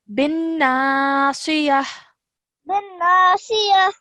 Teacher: We just revised this, that whenever you're pausing on a ta marbuta, then the ta marbuta changes into a ha sakin